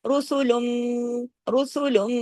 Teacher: میم تشدید ہے نا تو رسولم بڑا غنہ ہو رہا ہے